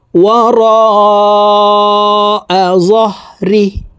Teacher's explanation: র এখানে চার আলিফ টেনে পড়তে হবে, কারণ মদর হরফের উপরে মোটা চিহ্ন বামে হামজা মধ্যে মুত্তাসিল চার আলিফ টানিয়া পড়িতে হয়।